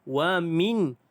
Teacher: minha, nun mati bertemu dengan huruf ha. Tidak ada dengung. Bacaan jelas tanpa dengung.